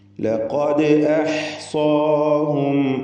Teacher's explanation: ദാലിന് ഖൽഖല സുഗ്റ നൽകുക.